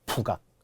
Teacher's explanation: 그러나 발음은 그렇지 않잖아요. 발음은 연음이 되어 북악이 되죠. 북악. 그러면은 어때요? 받침에 있던 기억이 첫 소리로 올라갔어요.